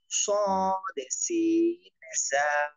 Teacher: 12 নম্বর মাখরাজ, জিহ্বার আগা সামনের নিচের দুই দাঁতের পেট ও আগার সঙ্গে লাগাইয়া